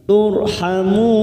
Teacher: ro sukun yang didahului dumah kita baca tafkim